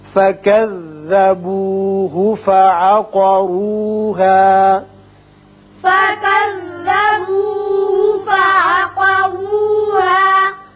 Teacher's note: قاف پر پڑھیے اور را کو بھی پر پڑھیے اس لیے کہ اوپر پیش ہے.